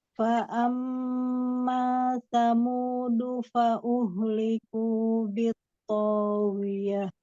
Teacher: Fa amma ada gunnah di situ, tempo durasinya tidak terburu-buru.